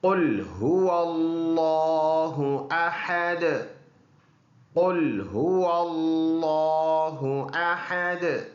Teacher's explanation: last word ہے دال، اور یہ حروف قلقلہ میں سے ہے، اس میں قلقلہ کریں گے، یعنی آواز دوبارہ مڑ کے آئے گی